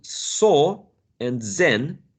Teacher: these two sounds are alveolar because the tip of the tongue touches the alveolar Ridge which is the place behind the upper teeth right behind the